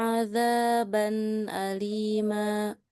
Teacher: alim jangan didengungkan dia biasa aja